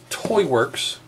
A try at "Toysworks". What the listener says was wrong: Toysworks. There's an S.